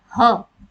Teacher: कंठ यानी गला। ह आप बोलोगे तो ह में जो है सीधे सीधे ध्वनि गले से निकलती है, कंठी व्यंजन इसको कहा जाता है।